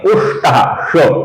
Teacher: अर्थात पुष्टः के विसर्ग का हम अपूर्ण श, हल्का सा श ऐसा उच्चारण करेंगे